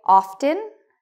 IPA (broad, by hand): ɔftən